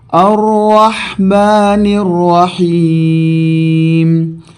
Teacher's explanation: رحمان اور رحیم دونوں میں را پہ زبر ہے لہٰذا اس کو ہم پر پڑھیں گے